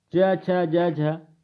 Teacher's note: च छ ज झ यह क्या होती है, तालव्य ध्वनियां होती हैं।